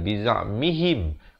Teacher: ha baris bawah bunyi hi, bukan bunyi he